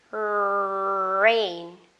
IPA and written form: reɪn (rain)